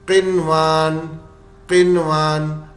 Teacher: फिर इगाम नहीं होगा व इजहार की तरह पढ़ लिया जाएगा बगैर गुन्ना किए हुए बस नून को जाहिर करके बिल्कुल इजहार की तरह पढ़ दिया जाएगा